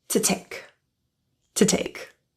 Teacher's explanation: to reduces to T because it's unstressed